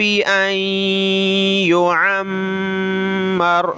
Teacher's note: عین نکالیں اور میم پہ غنہ کریں